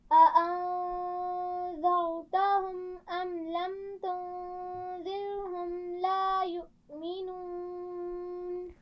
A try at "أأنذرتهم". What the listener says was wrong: را کے مخرج کو واضح کیجیے. أأنذرتهم